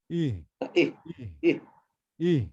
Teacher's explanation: গলা ফাঁকা, কোনো চাপাচুপি করা যাবে না